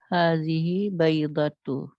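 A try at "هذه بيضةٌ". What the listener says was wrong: Baido. Tun. Nah, jangan lupa. Hadhihi baidotun.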